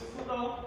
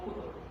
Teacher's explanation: in some Western dialect they are using it as fudo. They can use fa instead of ha.